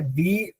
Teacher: अगर दीर्घ है दी, तो उस पर ज्यादा जोर दिया जाता है, ई पर ज्यादा जोर दिया जाता है।